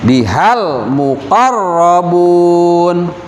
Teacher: Nah, di sini biha ba kasroh bi ha alif. Nah, walaupun di depan huruf ha yang berharokat fathah ada alif, tapi di situ nggak boleh dibaca panjang karena digeret ke lam alif lam sukun gitu.